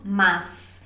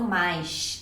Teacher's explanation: Eles fazem o som de S como se fosse o som de X.